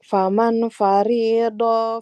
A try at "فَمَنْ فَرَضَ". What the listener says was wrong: bukan faridu. Faman farodo. Harokatnya fathah, bukan kasroh. Untuk panjang pendeknya, nah hati-hati ya. Faman farodo. Di sini nggak ada yang panjang.